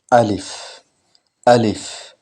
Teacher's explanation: আলিফ কণ্ঠনালীর এই কণ্ঠনালীর প্রথম ভাগ থেকে এই আলিফের উচ্চারণ আসবে